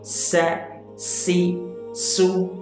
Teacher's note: تو سین کی ادائیگی میں کیا ہوتا ہے کہ ایک دم سے سیٹی نکلتی ہے, منہ سے سیٹی جیسی آواز تیزی سے نکلتی ہے, تبھی یہ سین ادا ہوتا ہے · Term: صفت صفیر